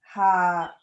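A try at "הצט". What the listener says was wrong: Hachet. Yeah, the T. Hachet. So remember, you've got two T's in Hebrew. The one's got a toe and the other one's got a hole at the top.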